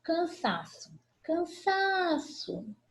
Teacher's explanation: Penúltima sílaba tônica, paroxítona.